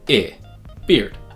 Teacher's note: Now the E and A in this word are pronounced I. It's a lax front high vowel, and it sounds like I, beard.